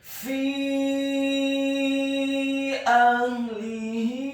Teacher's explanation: Karena setelah huruf fa yang kasroh ada hurufnya sukun, dan di atas huruf fa ada harokat bendera, maka huruf fa-nya dibaca kasroh 4-6 harokat